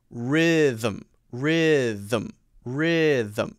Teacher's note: so you go directly from the th sound to the m sound